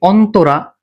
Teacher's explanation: তিন অক্ষর বলে এখানে উচ্চারণ হবে অন্তরা এখানে তর সাথে ওকার হবে